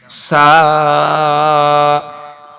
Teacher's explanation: سا جب پڑھیں گے تو دونوں ہونٹوں کے درمیان میں زبان کی نوک آئے گی اور نرمی سے یہ سا ادا ہوگی۔ سا، اور سا کے اوپر تین نقطے ہیں۔